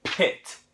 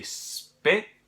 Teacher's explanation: There's going to be a puff of air coming out of your mouth when you have a P at the beginning of a word.